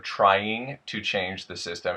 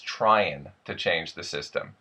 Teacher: We have the ing sound at the end of a word becoming the n sound.